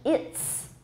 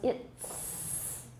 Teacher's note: The T in it actually affects the z and turns it into a voiceless s. So it is becomes voiceless, it's, no voicing. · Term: perseverative assimilation